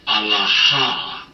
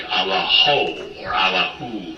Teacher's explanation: you're going to hear it pronounced something like Allaho or Allahu, because the way they use vowels on the ends of words has changed